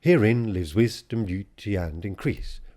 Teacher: increase really wants to stress on the second syllable in order for the line to scan properly